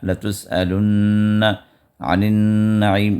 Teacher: ادغام مع الغنہ کی یہاں پر بھی مشق ہے کہ اس نون کو 2 حرکت تک دبا کر ہم پڑھیں گے